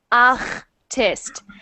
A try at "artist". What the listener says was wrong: Much better. Try it again, but try to get it even further, because right now it's making that ch sound a little bit.